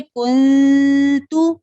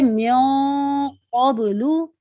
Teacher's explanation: من یہ باریک اخفا ہو گیا، میوں یہ موٹا اخفا ہو گیا